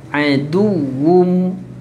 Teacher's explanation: tanwin bertemu mim, muncung, dengung, masukkan tanwin ke dalam mim, rapatkan bibir.